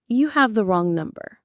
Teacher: The melody on number goes down.